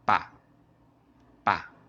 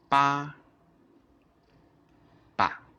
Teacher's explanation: So if you want to pronounce a light tone, you just read the first tone, but you read it quickly and short. Ba is the first tone, ba.